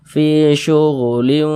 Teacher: di bagian linya itu kita tahan sejenaknya kita panjangkan sepanjang dua harakat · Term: didengungkan